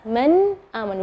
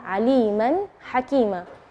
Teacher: Kita kasih contoh misalnya dari kalimat dari hamzah misalnya man amana. Nun sukun ketemu dengan hamzah, maka bacanya nunnya yang jelas.